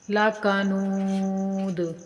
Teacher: دال کو ہلا کر کلکلا کر کے پڑھیں گے کیونکہ دال وقف کی وجہ سے ساکن ہو رہی ہے